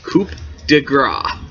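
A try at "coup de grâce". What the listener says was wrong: It's coup de grace. It's French, so the P is silent. Coup de grace is the technical pronunciation.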